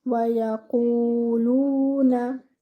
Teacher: The Ya should be given one count. Your Qaf over here should be without air, not like the letter Kha.